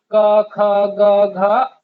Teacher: ये होते हैं कंठ से बोलने वाले